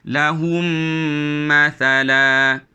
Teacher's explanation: Kita baca dengan dirapatkan bibir dan didengung. Dengung serta dimasukkan ke dalam huruf yang kedua tadi. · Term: idgham syafawi